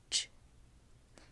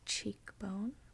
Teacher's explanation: which is actually a combination of t and sh, like the T and the SH sound. You combine them together and it makes a ch, CH, ch sound.